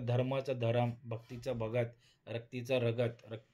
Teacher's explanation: दोन व्यंजनांच्या मध्ये एखादा स्वर मिसळला जातो आणि जोडाक्षर फोडले जाते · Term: स्वर भक्ती, स्वरभक्ती